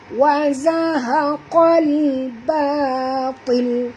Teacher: Ba di sini jangan tebal. Ba adalah huruf ringan. Ya, huruf istifal. Yang tebal ialah huruf ta.